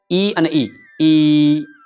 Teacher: ઈ ક્યાંથી શબ્દ નીકળ્યો મૂળાક્ષર તાળામાંથી નીકળ્યો એટલા માટે તાલવ્ય છે